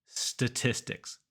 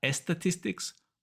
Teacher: it starts with just S. We don't put E at the front. Statistics, not estatistics, but statistics.